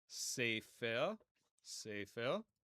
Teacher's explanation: pe without the dagesh will make an F sound or a PH sound